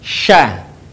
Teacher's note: ketika melafalkannya menyebar nafas dan udaranya · Huruf sya keluar dengan menyentuhkan tengah lidah kita dengan langit-langit. Diucapkan, mengalir udaranya, dan mengalir pula nafasnya. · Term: tafasyi